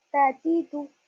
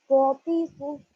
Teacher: ता की आवाज बारीक होगी, बगैर झटके की, और पौ की आवाज मोटी होगी और झटके के साथ होगी